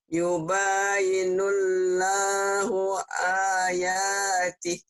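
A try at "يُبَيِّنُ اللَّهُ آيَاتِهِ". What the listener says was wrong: Oke, kurang nyamber. Yubayyinun. Yubayyinullah, nullah. Sama ke W dulu baru Allah.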